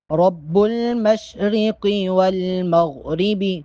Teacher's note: مشرقی اس میں قوف اور والمغربی میں غین کو موٹا پڑھیں گے۔